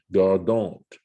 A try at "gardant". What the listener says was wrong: yeah, but it's pronounced gardon. No T in the pronunciation.